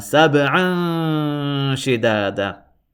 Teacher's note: I'm exaggerating slightly, but I'm holding the noon sound in my nose a little bit, and that is the rule of Ikhfa.